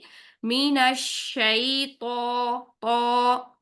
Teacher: त मोटा हर्फ है और मोटे हरूफ की साउंड मैंने आपको बताई थी औ की साउंड होगी